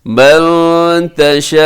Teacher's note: मद्दे मुत्तसिल है, 4 सेकंड तक लंबा करेंगे